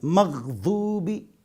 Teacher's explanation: مغضوبی، تو دال بھی نہیں مغضوب، ضوا بھی نہیں ہے مغضوب، دال سے نرم ہے مغضوبی، ضوا سے سخت ہے مغضوبی، لیکن قریب ہے ضوا کے نہ کہ دال کے، حروف مستعلیہ میں سے ہے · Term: ضاد